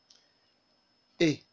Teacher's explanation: It is a front, close, lax, and unrounded vowel. The mouth is held slightly open and in a lateral or smile position. The lips are spread for this sound.